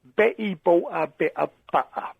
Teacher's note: It's missing the T out of everything. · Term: glottal stop